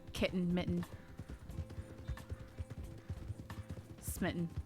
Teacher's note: glottal stop on a lot of double t's for some reason